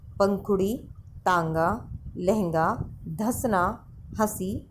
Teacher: अनुनासिक में हवा हमारे नाक और मुंह दोनों से निकलती है। जब हम अनुनासिक का उच्चारण करते हैं, अनुनासिक बोलते हैं, तो हवा हमारी नाक से भी निकलती है और मुंह से भी निकलती है।